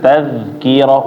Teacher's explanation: Tazkirah ya, digigit. Tazkirah, ujung lidahnya tazkirah, jangan dilepas. Kalau dilepas dia jadi kepantul.